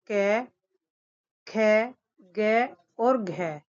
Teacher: क वर्ग के सभी वर्णों का उच्चारण स्थान कंठ से होता है, जैसे क, ख, ग और घ।